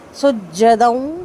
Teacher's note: دال تنوین کے بعد واو ہے، ادغام مال غنہ ہوگا، 2 حرکت غنہ کریں گے